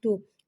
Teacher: تو، تو کو ایک الف یعنی 2 حرکات کے برابر کھینچ کے پڑھیں گے. تو حرف مستعلیہ ہے لہٰذا اس کی آواز حلق سے موٹی ادا ہوگی. تو پہ پیش ہے، اسے ہونٹوں کی گولائی سے ادا کر کے پڑھیں گے.